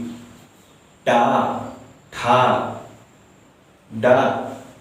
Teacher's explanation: ये सब के उच्चारण करने से हमारा जीभ पलट जाएगा। जब जीभ पलटते हैं तो उसे मूर्धा कहते हैं, मूर्धा। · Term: मूर्धन्य वर्ग